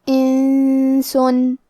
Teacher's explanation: سین حروف الاخفاء میں سے ہے تو ہم یہ حکم کو غنہ کے ساتھ ادا کریں گے